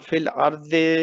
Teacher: را کو موٹا پڑھیں گے، اس سے پہلے زبر ہے